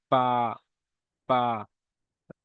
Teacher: বার মাখাস দুই ঠোঁটের শুকনো অংশ হইতে উচ্চারিত হয়